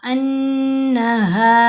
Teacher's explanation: अन्नहा, अगर हम पढ़ते हैं अन्नहा तो फिर गुन्ना नहीं हुआ, तो नून मुशद्दद होने की वजह से यहाँ हमने गुन्ना करना है